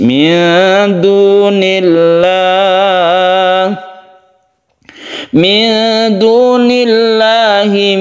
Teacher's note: Setiap ada lafaz Allah yang kita sebut dengan lafdzul jalalah, apabila dia itu sebelumnya kasroh, maka dia dibaca tarqiq atau muraqqaq atau dibaca tipis. Min dunillah, min dunillahi min waliyyin wala nasir.